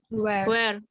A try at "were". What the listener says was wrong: was dan were ya, bukan where tapi were ya bacanya.